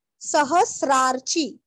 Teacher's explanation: भयकृद्भयनाशनः। सहस्रार्ची, सहस्रार्ची, सहस्र ह के ऊपर आघात, सहस्रार्ची, वहां पे स आधा और र के जैसे उच्चार करना है, त्र नहीं करना । हाँ, सहस्रार्ची, रार्ची आधा र, चीरस्व सहस्रार्चिस आधा स, सहस्रार्चिस,